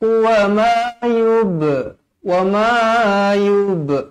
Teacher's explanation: Ma mad asli 2 harakat. Yub ba qalqalah sughra, dibaca melantun.